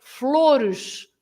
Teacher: So, for example, you say flores, flowers, flores, right? So the last sound is a bit of a sh